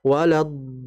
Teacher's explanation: dalam membaca mad lazim kilmi mutsaqqal sedikit dihentak untuk menandakan bahwa huruf setelahnya itu adalah huruf yang bertasydid sehingga jelas di situ.